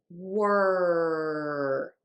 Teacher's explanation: The tip of your tongue is going to be low or flipped back for that It really depends on the person. Back of the tongue is pulled up. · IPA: /wɝ/